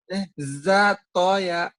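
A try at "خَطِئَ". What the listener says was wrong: Ini kok mau za. Titiknya di atas. Kho.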